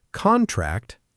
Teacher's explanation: Contract, stress on the first part, is a noun, a legal paper you sign